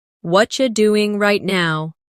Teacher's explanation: What are you doing right now? In natural speech, what are you becomes what-cha.